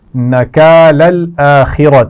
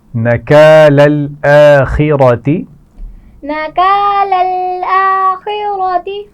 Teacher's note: نکال الآخرۃ، یہ دونوں الفاظ ملا کر پڑھے جائیں گے. اس میں خا کو موٹا پڑا جائے گا، را کو موٹا پڑا جائے گا.